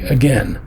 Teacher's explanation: again is a stress on the end